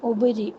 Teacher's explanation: یا سائلنٹ ہے، یا کو بالکل نہیں پڑھنا